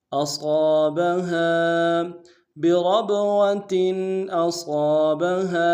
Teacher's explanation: بربوۃ اصابها حمزہ کو نون سے ادا کریں گے، صاد کو موٹا ادا کریں گے اور ساتھ الف مدہ ہے کھینچیں گے